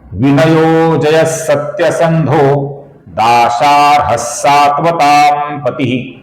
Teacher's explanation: इसका जो विसर्ग है इसके आगे सात्वताम का स आने के कारण इसका अपूर्ण स, हल्का सा स ऐसा उच्चारण हम करते हैं। सात्वताम का जो अनुस्वार है दोस्तों, इस अनुस्वार का अपूर्ण म ऐसा ही उच्चारण हम करते हैं क्योंकि इसके आगे पति का प आया हुआ है।